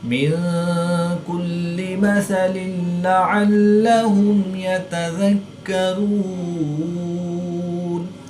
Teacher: 2 زیر کی تنوین کے بعد لام حروف غیر معلوم میں سے ہے تو یہاں پر ادغام بلا غنہ ہوگا یعنی غنہ نہیں کریں گے۔